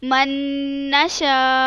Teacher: نون کو نون کے اندر ادغام کر دیا, مدغم کر دیا, یعنی اس کو اس کے اندر چھپا دیا. وہ 2 نون کیا ہو گئے؟ ایک نون بن گئے.